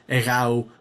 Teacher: it is egáu with the stress on the diphthong